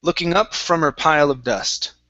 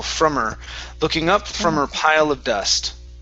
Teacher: Don't worry too much about ending the M sound. Just connect it right into her.